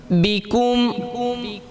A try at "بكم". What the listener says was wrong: نہیں اب جو پیش میں پڑھو نا واضح کر لو،